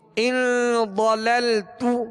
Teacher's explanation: ضاد کو پر پڑھیں گے اس لیے کہ یہ حروف مستعلیہ میں سے